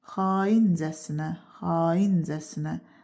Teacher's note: Burada da A uzun tələffüz olunur. İlk hecasındakı sait uzun tələffüz olunur. A. Vurğu da düşür ikinci hecanın üzərinə. Casına-cəsinənin üzərinə düşmür.